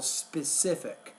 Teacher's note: put the stress on that second to the last syllable